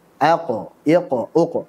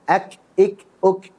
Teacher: beda yang pertama dari segi sifat qof jahar sedangkan Kaf hams · Qaf dia punya sifat qalqalah kalau sukun.